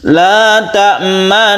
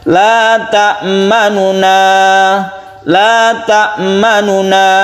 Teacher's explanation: Kalau yang ar-raum tidak dengung, karena dia berubah atau kembali ke asalnya la ta'manuna, tapi nunnya dibaca sepertiga saja.